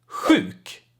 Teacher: it's basically like an H that has a lot of air and it comes, kind of hits the roof of your mouth and or the back part of your mouth a little bit. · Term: SJ sound